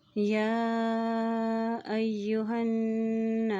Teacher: या के ऊपर खड़ी ज़बर भी है और उसके ऊपर मद भी है, इसलिए इसको लंबा करेंगे और हमज़ा के ज़बर को या के साथ मिलाएंगे।